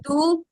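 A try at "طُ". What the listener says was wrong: இல்ல இல்ல தூ நல்லா அழுத்தமா சொல்லணும் தூ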